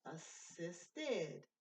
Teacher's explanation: Verbs ending in T and D have the id ending and an extra syllable.